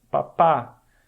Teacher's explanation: O primeiro A ele é breve, tu fala menos tempo. E o segundo A é um A mais longo. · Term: A longo